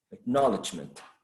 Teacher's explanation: So acknowledgement would be stressed on the second syllable.